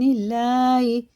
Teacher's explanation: اور اللہ کا لام زیر سے باریک ہے